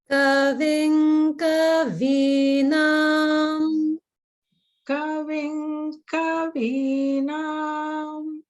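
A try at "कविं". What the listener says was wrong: Very good. But the ka in kavim should be down.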